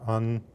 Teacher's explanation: a vowel plus a sonorant as in un. That's a stronger nucleus than just a plain vowel.